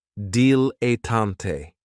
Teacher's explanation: this word has 3 syllables, and there's kind of like a stress on that first and last syllable. Dilettante.